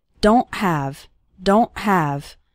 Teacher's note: it's more of a stop at the back of your throat the sound cuts off very suddenly